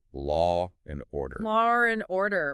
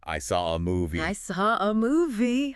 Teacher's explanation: The most common intrusive sound, especially in non-rhotic accents like standard British English, but you hear it elsewhere too, is an R sound. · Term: intrusive R